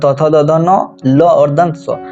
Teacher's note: दांत और जीभ की सहायता से उच्चारित होने वाले वर्ण को हम लोग दंत वर्ण कहते हैं